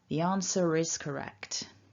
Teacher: that long r that could be an ah and we've got this linking r that will activate if the word is followed by a vowel